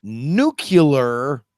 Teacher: if you say nucular you're putting an extra syllable between the C and Al